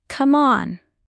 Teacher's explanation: Voice goes down. Sounds annoyed.